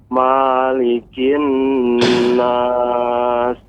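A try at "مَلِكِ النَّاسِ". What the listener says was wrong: Nah, ini dalam surah An-Nas, mimnya tidak panjang, Pak. Malikin nas. Ya, kalau dalam surah Al-Fatihah, ya, mimnya dipanjangkan, tapi surat An-Nas pendek. Malikin nas.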